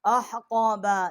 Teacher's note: یہ ہا جو ہے یہ وسط حلق سے ہے، آکے قاف ہے، یہ بھی وسط حلق سے جب زبان جو ہے اوپر کے تالو کی طرف ٹکر کھائے گی، بڑی قاف ہے، اس کا مخرج ہے۔